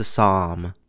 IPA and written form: əˈsɒm (Assam)